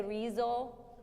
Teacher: so an S between 2 vowels turns into a Z